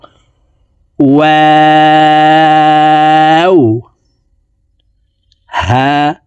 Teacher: ওয়াও হরফ দুই ঠোঁট গোল করে দুই ঠোঁটের মাঝে ফাঁকা রেখে উচ্চারণ করে পড়বো